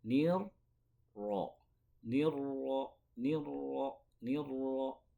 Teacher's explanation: Seakan-akan kita membaca ro yang sukun, selanjutnya membaca ro yang berharokat. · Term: huruf yang bertasydid